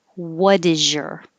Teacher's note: so the t changes to a d and the s what d is really a z is so